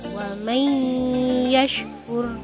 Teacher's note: dibaca dengan bacaan idgham bi gunnah dengan cara menekan selama 3 harokat atau 3 ketukan